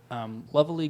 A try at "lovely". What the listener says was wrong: Lovely? I think you added an extra syllable to lovely. Lovely. Lovely.